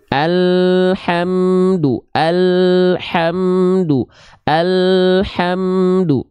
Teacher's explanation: lam tidak syiddah ya alhamdu alhamdu alhamdu Jadi bukan Al hamdu antara AL dengan ha tak boleh ada Jedah Hening di antara mereka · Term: huruf lam sukun